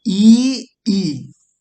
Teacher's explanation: आई के बाद ई और ई, ये आपको तालु से बोला जाएगा।